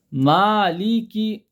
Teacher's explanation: لام کسرہ آواز باریک اور نیچے جائیں گی